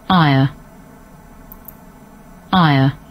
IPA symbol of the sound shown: aɪə